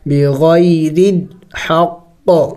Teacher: ہے، را کو باریک پڑھیں گے، بغیر الحق، قلقلہ کریں گے، قاف وقف میں ساکن ہو جائے گا تو سکون والے حروف قلقلہ جب ساکن ہوتے ہیں تو قلقلہ کرنا ہوتا ہے